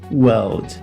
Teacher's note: no inglês britânico, esse R ele vai ser omitido da palavra, então world.